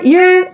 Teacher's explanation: the word your becomes your reduces so quickly you don't need to try to make a vowel there at all just your Y sound awesome Yep also notice in the word